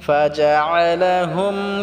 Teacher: আইনটাকে আমরা গলায় চাপ দিয়ে উচ্চারণ করব